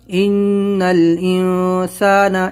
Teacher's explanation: اس میں نون ساکن کے بعد سین اخفا کرنا ہے